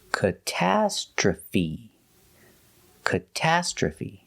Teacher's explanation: And the last sound is fee. The stress is on the second and fourth syllable.